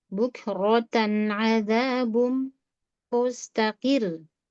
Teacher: Bukro, rohnya kurang tebal ya.